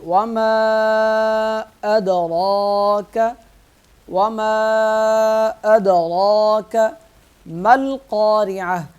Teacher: القارعۃ ملقارعہ، وما ادراک ملقارعہ، میم پہ مد کریں گے، وما 3 الف کے برابر، دال پہ قلقلہ کریں گے، آواز کو ہلائیں گے اور را کو موٹا پڑھیں گے اور 1 الف کے برابر کھینچ کر پڑھیں گے۔